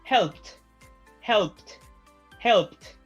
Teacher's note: If the sound before the ed ending is voiceless, for example, P, no vibration, the ed ending is pronounced like a T